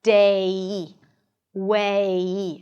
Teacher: Imagine as if there is a y sound at the end. And you want to get to that y sound.